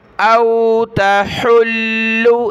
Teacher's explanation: औ तहुल्लु, हमज़ा वाव ज़बर औ, ता ज़बर ता, हा लाम पेश हुल, लाम पेश लु, हुल्लु। औ तहुल्लु, लाम को सख्त करेंगे तशदीद की वजह से और हा को गले से निकालना है